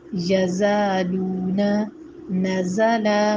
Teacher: زا اس کی آواز باریک تو ہوتی ہے لیکن سیٹی والی ہوتی ہے